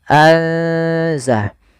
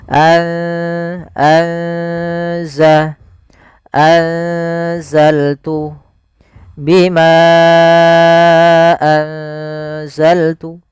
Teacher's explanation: Tapi tidak semua ikhfa dibaca dengan eng. Maka anza seakan-akan kita langsung menafalkan ke huruf zainnya.